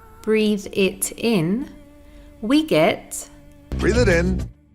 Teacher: the T sound in it is between two vowel sounds. So it morphs into a soft D. So instead of hearing breathe it in, we get breathe it in. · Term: American T